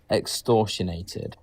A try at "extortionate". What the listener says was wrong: Extortionate. There's no D.